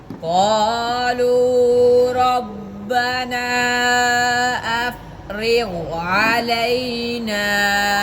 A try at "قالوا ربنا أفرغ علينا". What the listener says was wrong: बड़ा सही, लेकिन आपने मद मिस कर दिया।